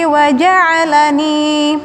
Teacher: ain di tengah tenggorokan